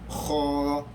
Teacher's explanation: Di atas bahagian anak tekak, bunyi macam berkahak, orang nak buang kahak tu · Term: huruf halqi